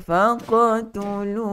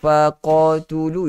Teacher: Bari'ikum faqtulu okey, faqtulu. Kena baca dengan qalqalah, dengan lantunan yang ringan. Dia seolah-olah ada bunyi macam bunyi baris.